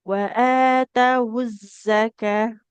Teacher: Kalau berhenti ini jadi huruf H ya, tak marbutoh namanya.